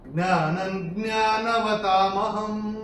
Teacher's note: चौथे चरण में न के ऊपर अनुस्वार के बाद का अक्षर है ज्ञ, तो अनुस्वार के बाद जब ज्ञ आएगा तो अनुस्वार का उच्चारण होगा न